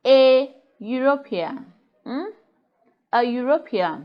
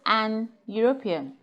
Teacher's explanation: European, that begins with the sound ye, which is a consonant sound. And that goes to say that we say a European.